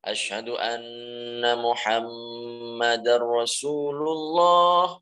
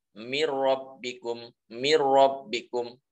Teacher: dileburkan nun sukun ke huruf lam atau huruf ra, huruf ra tanpa disertai dengan dengung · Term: idgham bi ghairi gunnah